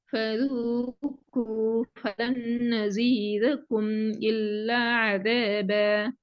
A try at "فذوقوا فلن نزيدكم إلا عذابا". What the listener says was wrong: இந்த தால் சவுண்ட் வரலையே. நசீதக்கும் அல்ல. நசீதக்கும்